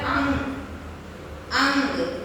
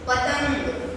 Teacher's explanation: अनुस्वार का उच्चारण करते समय वायु क्या होती है? नाक से निकलती है।